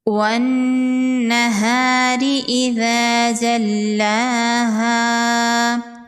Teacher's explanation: یہاں پر بھی حروف شمسی ہے، واو کو نون کے ساتھ ملائیں گے، الف اور لام کو نہیں پڑھیں گے۔ نون مشدد پر غنہ ہوگا۔ الف مدہ ہے، ایک الف کے برابر کھینچ کے پڑھیں گے۔